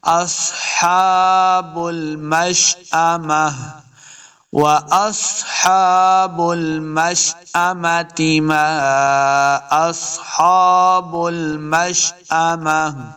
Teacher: مشأمہ گول تا کو ہم نے ہا کے اندر بدلنا ہے، ہا کی آواز آئے گی۔